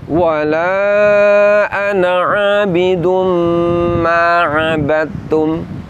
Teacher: surah al-kafirun wala anaidum Ma abadum lafaz Ma abadum tertulis ngabadtum huruf Dal sukun tidak lagi ada bunyi qalqalahnya apa sebab karena telah idgham telah dimasukkan ke huruf ta yang · Lafaz ma'abattum tertulis ngabadatum. Huruf dal sukun tidak lagi ada bunyi kolkolahnya. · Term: Idham mutajanisin, idgham mutajanisin